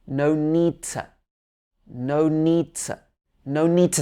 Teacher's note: to thank so here the two changes to no need to we don't pronounce the last d in need · We don't pronounce the last d in need. So it'd be no need to.